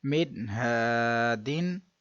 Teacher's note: نون ساکن کے بعد حرف حلقی ہے تو اظہار ہوگا، غنہ نہیں کریں گے